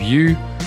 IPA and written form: jə (you)